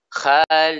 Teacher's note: Di antara kesalahan dalam pengucapan kha adalah adam tafkhimiha, tidak menebalkannya. Kha ini termasuk huruf isti'la. Yang mana konsekuensi dari isti'la adalah tebalnya suara huruf tersebut ketika keluar dari makhrajnya.